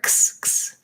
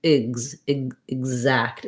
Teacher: So it's more of a g and a z sound together. And then we have our letter A in exact says the black cat vowel because it's in the stressed syllable.